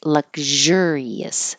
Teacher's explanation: Now it's not sh, but the voice zh